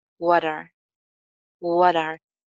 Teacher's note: T के बाद vowel sound है, so it becomes flap T.